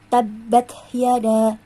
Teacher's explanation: Yang tabbat hanya sekedar ditekan tanpa ada ditahan. Sedangkan yang di akhir ayat waw yang bertasydid ini disertai dengan ditahan.